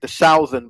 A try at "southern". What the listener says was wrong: So that's just an example I was saying where the vowel isn't quite there.